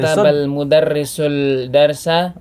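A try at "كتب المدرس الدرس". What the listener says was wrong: Samsiah ya. Katabal mudarrisud darsa.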